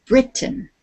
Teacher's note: we put the emphasis the accent on the beginning of the word